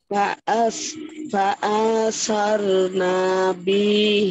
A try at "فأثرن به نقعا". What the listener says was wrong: فأثرنا তে নাতে টান হয়ে গেছে টান হবে না